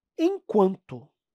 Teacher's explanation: Você tem o sonzinho do U mais o sonzinho do A nasalizado. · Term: ditongo